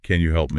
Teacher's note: If you say, "Can you help me?" with a flat falling tone, it sounds like a command, >> right? You need that rising intonation at the end, that upward inflection. Can you help me?